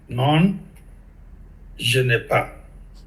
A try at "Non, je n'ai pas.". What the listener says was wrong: And pardon, for no, you don't pronounce the last N. It sounds like the no as in English.